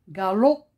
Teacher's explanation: J'ai pas prononcé le P. P, c'est une lettre muette.